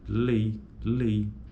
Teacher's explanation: ditongo decrescente aquele que a proeminência acentual ocorre na primeira vogal